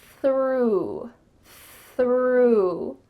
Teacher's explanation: Your tongue is coming out between your teeth, and there's some air. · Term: TH sound